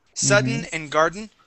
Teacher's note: You can swallow those D's.